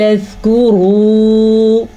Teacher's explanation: یہ کاف نرمی سے پڑھا جائے گا کیونکہ یہ باریک کاف ہے۔ زال کو بھی نرمی سے پڑھیں گے۔